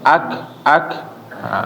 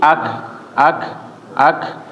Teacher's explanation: jangan sampai dia dipantul bukan dipantul tetapi dikeluarin nafas ya atau ada aliran angin ya ak ak ada aliran angin jadi bukan pantulan bukan Ak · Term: huruf Kaf